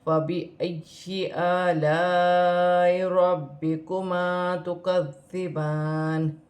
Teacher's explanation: یا کے ساتھ ملا کر پڑھا جائے گا، الف مدہ ہے، الف مدہ میں بڑی مد ہے، اسے 5 الف کی مقدار کھینچ کر پڑھا جائے گا ، با مشدد ہے، با کو را کے ساتھ ملا کر